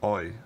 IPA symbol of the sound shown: əi